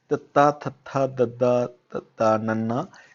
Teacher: ਫਿਰ ਜੋ ਅਗਲੀ ਲਾਈਨ ਹੈ ਤੱਤਾ, ਥੱਥਾ, ਦੱਦਾ, ਤੱਤਾ, ਨੰਨਾ, ਇਸ ਨੂੰ ਬੋਲਣ ਲੱਗਿਆ ਜੀਭ ਜਿਹੜੀ ਆਪਣੀ ਜੀਭ ਹੈ ਉਹ ਦੰਦਾਂ ਦੇ ਨਾਲ ਲੱਗਦੀ ਹੈ ਤਾਂ ਇਸ ਕਰਕੇ ਇਸ ਨੂੰ ਦੰਤੀ ਕਹਿੰਦੇ ਆ।